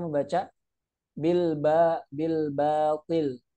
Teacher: Ketika kita nggak menyempurnakan gerakan bibir kita, maka itu juga akan mempengaruhi tebal tipisnya. Bil batil, ba tipis, ba, bukan bilbo gitu.